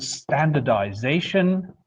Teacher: So if you compare standardize and standardization, well then you immediately see that in standardize the stress would have been on the first syllable but in standardization the stress shifts towards the end of the new derivative